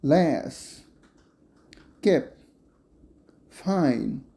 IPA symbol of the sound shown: las